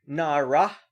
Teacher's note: with a dagesh in the hey, an aspirated hey, so you actually say the hey